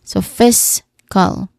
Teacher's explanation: The second syllable is unstressed and has a relaxed vowel sound because the primary stress here is on the first syllable